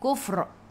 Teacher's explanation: Bila berhenti ra-nya tebal, sebelum huruf fa ada baris depan kufr. Kita baca tebal, lidah naik ke atas.